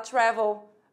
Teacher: o travel você tem a tônica na primeira sílaba do tra